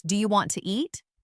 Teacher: Sometimes letters are dropped like the T in want to.